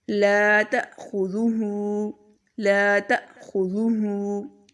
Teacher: لا تأخذوہ، لا تأخذوہ، لا کو تھوڑا لمبا کریں گے کیونکہ الف مدہ ہے